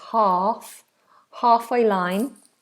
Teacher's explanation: although it has an L it's silent